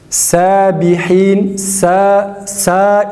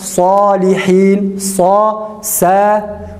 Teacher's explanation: İlk lafızlarda sadın harf-i metli fethalı şeklini okuyacağız. Sad, a sesi çıkararak okunur. Diğer ince harflerin tam tersine. Mesela sabihin, sa ince. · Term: sad kalın